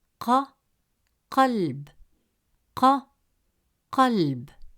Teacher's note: It is a deep sound, pronounced from the upper part of the throat, with a strong, pressured burst of sound that comes from the back of the roof of your mouth. The sound is pushed from the throat, giving it a heavy and forceful quality. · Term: Qaf